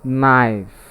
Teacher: in the pronunciation of the word knife, the letter K is silent